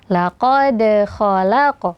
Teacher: Kemudian setelah dal sukun ini juga di antara 2 huruf tebal ya, ada huruf qaf dan huruf kha. Jadi qaf dan kha dibaca tebal, akan tetapi dalnya qalqalahnya tetap tipis